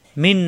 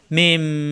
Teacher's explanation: না থাকলেও এখানে মনে মনে মিম ধরে তারপরে গুণ্য করে পড়তে হবে, কারণ এখানে নুন সাকিন অথবা তানবিনের পরে এখানে বা আসছে, তো নুন সাকিনের পরে বা আসা, এটা মিন না পড়ে মিম এভাবে পড়তে হবে